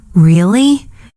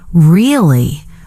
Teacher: If I say, Really? with a rising tone, it means surprise or interest. But if I say, Really? with a flat tone, it can mean disbelief or even sarcasm.